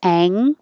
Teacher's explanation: So I think this is interesting that when you have an NK combination, you actually have an NGK combination because your tongue goes up to the NG place, ang, and then you're going to end it with a K.